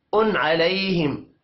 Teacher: تنوین کے بعد عین آ رہا ہے اظہار ہوگا غنہ نہیں کرنا